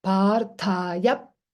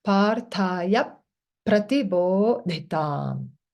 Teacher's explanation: It's as if there would be 2 pakaras. So you pronounce Parthaya, and then you close the lips. Parthaya. Stay there half a second.